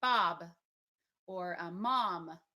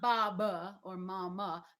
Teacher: the shadow schwa which is the slight uh that comes out afterwards like Bob or a mom